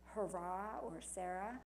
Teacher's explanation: when H comes at the end of the word, such as hurrah or Sarah. It is always silent. Even if you want to pronounce the H at the word, you would find it impossible.